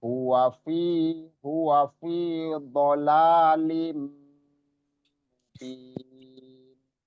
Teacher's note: dolalim langsung nggak pakai lin tapi lim. Ya, masuk ke mim langsung. Itu diidghamkan namanya, dimasukkan.